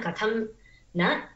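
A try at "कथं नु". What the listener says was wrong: கதம் நங்கிறத விட கதம் நூ போட்டுக்கோ. கதம்னு தனையா விஸ்லேஷ துக்கைர் நவைஹி யாஸ்யத்யத்ய சகுந்தலேதி ஹிருதயம் சம்ஸ்பிருஷ்டம் உத்கண்டயா.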